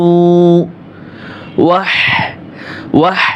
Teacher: গলার ভিতরে ফেস ফেস আওয়াজ আসবে